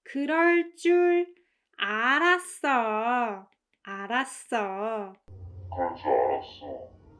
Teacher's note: As you can hear, the emphasis, the stress is on 알았어